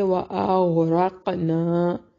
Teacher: کم میم ساکن کا اظہار ہے، اخفا نہیں کریں گے، وَأَغْرَقْنَا، غین کو موٹا، را کو موٹا، قاف پہ قلقلہ کریں گے